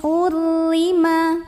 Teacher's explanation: ro kita bunyikan secara tarqik karena barisnya kasrah maka bacanya tipis lidah datar tidak perlu diangkat